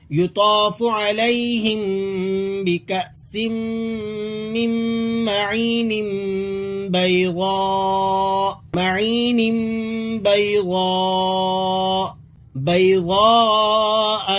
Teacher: آپ نے یہاں تنوین کو بھی ادا کرنا ہے اور اس کے ساتھ نون کی نہیں بلکہ میم کی آواز نکالنی ہے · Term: اقلاب